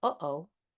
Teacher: like a glottal stop when you go, uh-oh, or when you go, huh, with an H